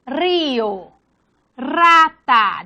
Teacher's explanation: La R simple representa el fonema vibrante múltiple, por tanto se pronuncia como tal al inicio de palabra